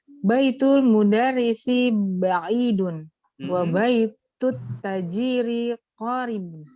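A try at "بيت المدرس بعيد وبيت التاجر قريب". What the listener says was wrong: Oh, sayang panjang pendeknya tertukar. Yang panjang tajirun bukan tajirun, qoribun bukan qoribun, itu saja. Iya, jadi baitul mudarrisi ba'idun wa baitut tajiri qoribun.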